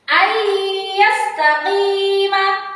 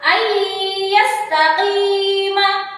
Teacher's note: Ya, nun, mim, dan waw. Maka cara bacanya adalah harus dimasukkan dengan cara mendengung. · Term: idgham bi gunna